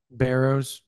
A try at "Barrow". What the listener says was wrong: Singular.